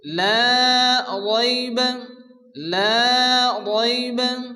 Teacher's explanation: লা আলিফ মাদ্দা 1 আলিফ টেনে পড়তে হবে